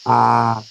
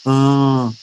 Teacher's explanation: O oral sai todo pela boca, o nasal sai parte pela boca, parte pelo nariz.